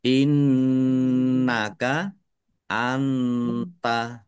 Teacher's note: nun sukun bertemu dengan huruf ta. Bacaan ikhfa dibaca samar-samar. · Innaka nun tasdid dibaca gunnah atau mendengung. Ditahan biar tampak mendengungnya.